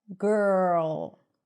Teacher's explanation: So you anticipate the R. The R comes in really quickly after the first consonant. Girl. So it feels like there is no vowel sound here.